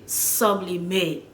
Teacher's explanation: an English person will put more emphasis on the beginning of the word, right? We say sublimate, and probably won't say the T and the E at the end.